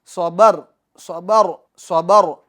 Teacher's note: स्वाद को पूर्व करेंगे क्योंकि ये हुरूफ मुस्तालिया में से हैं।